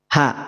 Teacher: Rasakan bahwa H itu memang betul-betul keluar dari pangkal tenggorokan.